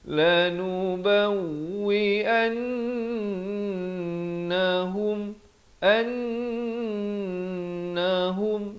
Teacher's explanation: itu an itu didengung dua harakat, dan hum izhar syafawi, jangan panjang, sempurna saja hum terus masuk.